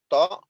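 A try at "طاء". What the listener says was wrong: Ta, bukan to Pak. Ta.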